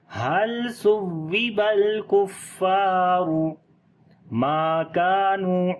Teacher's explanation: میم کو لمبا کریں گے، الف مدہ ہے، کاف کو بھی لمبا کریں گے، نون کو بھی لمبا کریں گے، دونوں جگہ پہ حروف مدہ ہیں.